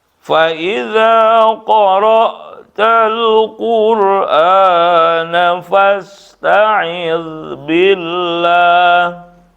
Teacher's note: Fasta'idz enggak ada pantulan, itu bukan qalqalah.